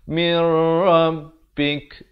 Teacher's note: Terus masuk tanpa dengung. Mir rabbik. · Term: Idgham bila gunnah